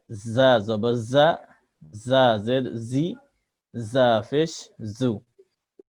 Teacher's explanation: জিহ্বার আগা সামনে নিচের দাঁতের আগা থেকে জা অক্ষর শীষ দিয়ে পড়তে হয়।